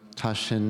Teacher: the T gets nasalized